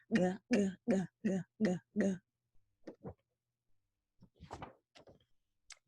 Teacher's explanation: But that little trick of the throat clearing gets the tongue up there, and then you just shorten it. Now the letter G is made just like the K with the back of the tongue up again, but this time the voice is on